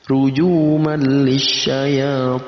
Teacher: Nah, kalau ini idgham tapi bila gunnah. Kita idghamkan, kita gabungkan antara tanwin dan lam tapi tanpa gunnah, tanpa dengung.